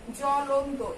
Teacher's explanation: পদের আদিতে অবস্থিত ব্যঞ্জন বর্ণে বফলা যুক্ত হলে বফলার কোনো উচ্চারণ হয় না